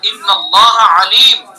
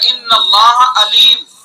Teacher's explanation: عین درمیان حلق سے ادا ہوگا اور حمزہ سینے کی طرف سے ادا ہوگا